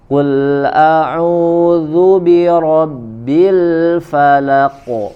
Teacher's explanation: dia harus tebal mengikuti sebagaimana dia berharokat fathah qafnya